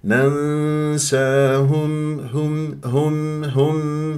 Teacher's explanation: شوف مرققه ولا اسحب ضمه الهاء للميم